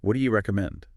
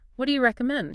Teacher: native speakers often put a little stress on you with the pitch going up slightly